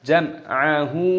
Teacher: mim sukun bertemu dengan ain, hukumnya dibaca idhar syafawi, dibaca jelas, jangan didengungkan.